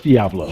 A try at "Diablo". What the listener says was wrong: No, it's Spanish, dog. The I sounds like an E.